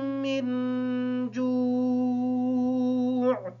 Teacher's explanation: نون ساکن ہے، اس وجہ سے نون پر بھی غنہ ہے۔